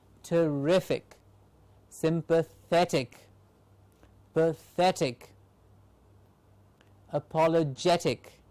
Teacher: Rific gets the stress, means rific is said with a little more effort. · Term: primary accent